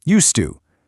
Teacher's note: In normal, everyday conversation, that D sound in used and the T sound in to just kind of melt together.